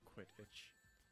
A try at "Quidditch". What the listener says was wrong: Quidditch. I think it's with a D, though, not a T.